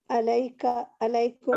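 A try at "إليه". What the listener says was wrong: الہی, الہی, الہی, الف ہے, الف پڑھے نا آپ, عین کیوں پڑھے؟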